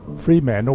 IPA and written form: ˈfriːmæntəl (Fremantle)